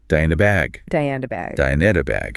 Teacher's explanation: The words do, you, need, a, and bag have completely melted into each other. The consonants are softened and the vowels are shortened.